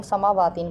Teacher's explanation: اب اس میں جو ہے ہم سماواتین پڑھتے ہیں، اس پہ کھڑا زبر ہے، میم کو بھی اتنا ہی لمبا کرنا ہے جتنا واو کو، یعنی ایک الف کے برابر